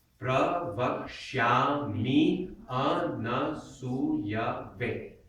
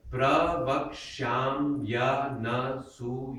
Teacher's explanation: The A gets carried over. That way you don't add an extra syllable.